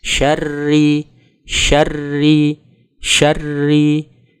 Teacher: Kemudian ada huruf Ro yang memiliki vokal shaddah dan kasrah. Ini dibaca tarqiq atau tipis, sehingga diucapkan dengan sedikit senyum.